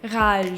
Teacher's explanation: The sound is coming from the back of my throat. It's not coming from anywhere else.